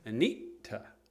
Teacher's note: it's a hard T, right? And then there's like a little glottal stop first. You like have to put on the brakes and then say T, like Anita, right?